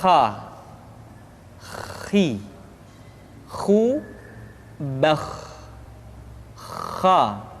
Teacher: Atau lebih praktisnya, pengucapan huruf kha persis terdengar seperti orang yang tidur dalam keadaan mengorok · Kha dikeluarkan dari pangkal tenggorokan.